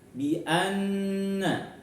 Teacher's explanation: Di sini ada nun tasydid, contoh dari gunnah musyaddadah, panjang dengungnya jangan lupa ngambil 3